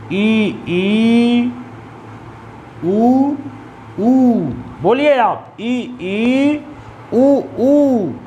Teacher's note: तो ये ऐसे स्वर होते हैं कि जिनके उच्चारण में मुख लगभग बंद होते हैं। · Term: संवृत्त